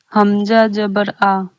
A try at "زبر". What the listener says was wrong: دیکھیے میں نے کیا کہا کہ دھیان دینا، جبر نہیں ہونا چاہیے، زبر ہونا چاہیے. زبر ہے، زبر زبر. حمزہ زبر آ. حمزہ زبر آ.